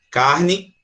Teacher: A gente pronuncia um I, mas se escreve com E.